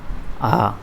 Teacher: जो विब्रत स्वर होता है मुख द्वार पूरा खुला होता है।